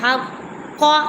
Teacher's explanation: قاف کو سختی سے پڑھیں گے کیونکہ اس کے اوپر تشدید ہے